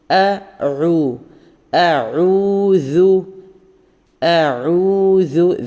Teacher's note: [സംഗീതം] ഇവിടെ തുടങ്ങുന്നത് തന്നെ ഹംസ ലൈറ്റ് ആക്കി പറയാം ഒക്കെ ലൈറ്റ് ആണ് ഐനും തൊണ്ട അക്ഷരങ്ങൾ ആയതുകൊണ്ട് നമ്മൾ തൊണ്ടിയിൽ നിന്ന് തന്നെ എടുത്തു പറയുക · സാൽ പറയുമ്പോൾ നാവിന്റെ അറ്റത്തു നിന്ന് ടിപ്പ് ഓഫ് ദി ടങ്ങ് നാവിന്റെ അറ്റത്തുനിന്ന് തന്നെ പറയുക